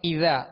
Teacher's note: اذا، ذال کو نرمی کے ساتھ ادا کریں گے. ذال کے آگے الف مدہ ہے لہذا ایک الف کی مقدار کھینچ کر ادا کریں گے · یہاں اذا شروع میں حمزہ ہے، اس کو سختی سے پڑھیں گے. اذا، ذال کو نرمی کے ساتھ ادا کریں گے.